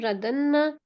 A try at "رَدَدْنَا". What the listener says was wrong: رددنا. اس میں تھوڑا سا ظنّا والا شامل ہو گیا تھا.